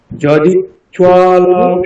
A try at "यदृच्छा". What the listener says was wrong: ইচ্ছা নয় এটা দয় রিকার, ঠিক আছে? দয় রিকার।